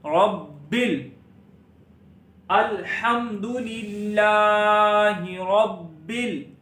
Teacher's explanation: را کو موٹا پڑھنا ہے، با پر تھوڑا سا رکنا ہے، با پر کلکلہ بھی کرنا ہے، اور با کو لام کے ساتھ ملا دیں گے